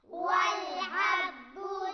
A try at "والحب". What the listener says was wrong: ح اور ہا میں فرق ہونا چاہیے، ح ہا، فرق محسوس کر رہے ہیں آپ؟